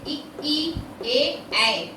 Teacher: इनको बोलने में जिह्वा का अगला हिस्सा कार्य कर रहा है, इसलिए इन्हें अग्र स्वर कहते हैं।